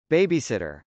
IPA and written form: bˈeɪbisˌɪtɚ (babysitter)